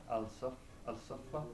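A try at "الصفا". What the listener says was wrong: As-Safa, you don't pronounce the lam.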